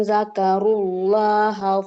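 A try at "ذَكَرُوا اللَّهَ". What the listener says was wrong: Boleh diulang ibu yang zakarullah lam di lafaz allahnya kurang tebal.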